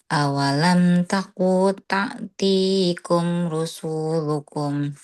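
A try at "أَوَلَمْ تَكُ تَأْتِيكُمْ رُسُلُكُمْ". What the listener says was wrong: Eh, rusu, sunya pendek, rusul, gitu.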